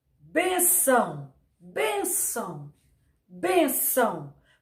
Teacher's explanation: Por mais que o ão seja uma sílaba aparentemente forte, o ben sai com mais intensidade.